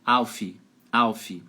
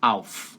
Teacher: O final é só um chiadinho.